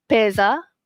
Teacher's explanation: S ni di antara dua vokal. So dia pesa. Okay, pesa bunyi Z